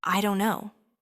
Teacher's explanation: The stress is on don't.